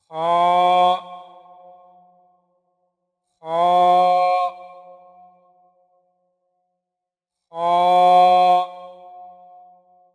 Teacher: خا، یہ حرف حلق کے اوپر والے حصے سے ادا ہوتا ہے۔